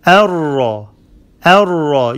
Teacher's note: You don't pronounce the noon. You merge the noon in the ra. Arra, a. Ra is heavy and then hamza is light. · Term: idgham without ghunna